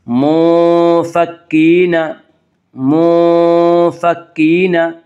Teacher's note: منفکین، منفکین، یا مدہ وہ یا جو ساکن ہو اس سے پہلے زیر ہو، یا مدہ کو ایک الف کے برابر کھینچ کر پڑھیں گے۔ منفکین، منفکین، تا کے اوپر کھڑا زبر ہے، کھڑا زبر کو ایک الف کے برابر کھینچ کر پڑھیں گے۔